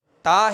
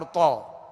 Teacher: تا کو باریک پڑھیں گے تو تا کا باریک پڑھنا یہ اس کی خوبی ہے، ٹھیک ہے، اور تو جو ہے اس کو پر پڑھنا، موٹا پڑھنا، یہ اس کی خوبی ہے، یہ اس کی صفت ہے اور صفت لازمہ ہے۔